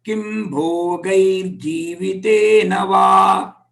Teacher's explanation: Club together, that R sound will be interpolated.